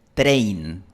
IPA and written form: 'tɾeɪn (train)